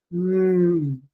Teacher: In the case of the two lips touch each other completely, preventing air from passing through the mouth, but the uvula is down, which means the air can pass through the nose. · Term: nasals